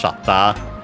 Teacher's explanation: accent on the first syllable, just like in English, shatta. Notice the doubling of the consonant.